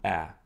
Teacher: it probably represented a tense low back vowel ah after non-palatal consonants in blocked positions